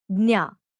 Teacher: Jnya is often pronounced in northern India, especially when used in Hindi as gya and in parts of western India as gnya.